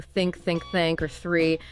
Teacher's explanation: Then there's the voiceless the, more just air passing through